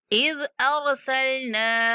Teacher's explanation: ज़ाल नरमी के साथ और नून को 3 सेकंड तक लंबा करेंगे।